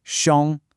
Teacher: The tone is the first tone, xiong. It needs to be high and flat, like you're holding a single note. A really common mistake for learners is to let their voice drop off at the end.